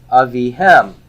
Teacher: where's my stress it's on the hem so it's on the tonics the tonic syllable is the final syllable right so V is open and free tonic and the AH